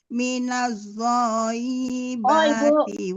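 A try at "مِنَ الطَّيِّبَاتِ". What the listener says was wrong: Bukan zo, itu to, minat thayyibati.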